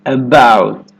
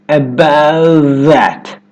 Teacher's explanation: Instead of that true T, at the end of most Americans are going to hold that T about. My tongue tip goes to the ridge behind my teeth and just stays there. About that. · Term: held T